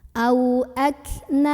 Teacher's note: Ak na ada ikhfa akrab karena ada nun sukun yang ketemu sama huruf ta. Maka cara membunyikan nun sukunnya ini disamarkan menuju huruf ta sambil berdengung. Karena huruf ta itu secara makhraj dekat dengan nun, masih sama-sama di ujung lidah ya.